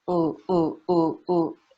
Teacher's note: If I'm just putting my lips out, ooh, ooh, ooh, ooh, it's a vowel, it's not an R.